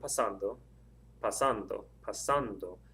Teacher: The stress is over that second A.